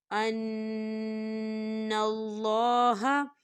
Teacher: ان نون مشدد ہے تو اس میں غنہ ہوگا